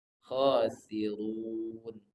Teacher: khosirun ru dibaca tebal ro berharakat damah